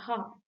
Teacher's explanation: initial sound in the word hat is an എക്സാമ്പিൾ ഓഫ് glottal sound